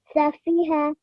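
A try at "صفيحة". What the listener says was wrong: Excellent. Well done.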